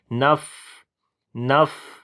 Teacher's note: فا کے اوپر صفت ہمس کریں گے، سانس کو جاری کریں گے